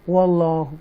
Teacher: یہ لام کو تفخیم کے ساتھ پڑھیں گے. واللہ کر کے بولڈ پڑھیں گے اس کو.